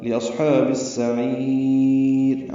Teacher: عین وسط حلق سے ادا کریں گے، لمبا کریں گے، را باریک پڑھیں گے، وقفاً وصلاً را باریک ہے.